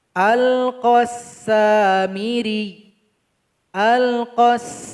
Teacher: Cara berwakaf di sini kita mesti menekankan huruf ya nantinya ketika mensukunkan. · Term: huruf ya yang bertasydid